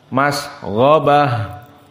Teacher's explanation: gha dalam keadaan mufakhamah, maka mas ghabah harus mufakham, gha, mas ghabah.